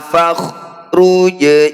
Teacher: disukun atau dimatikan bacanya harus memantul